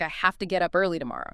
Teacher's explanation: Have to frequently becomes hafta.